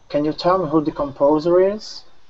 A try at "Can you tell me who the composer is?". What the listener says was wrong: All right, nice job. Very good.